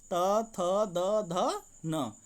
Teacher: देखें तो दंतव्य है यह त थ द ध न देखिए जब बोलेंगे तो दांत से जीभ का स्पर्श करती है